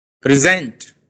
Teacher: pre was not stressed. Zent is clearly audible to you. It is louder. It is longer.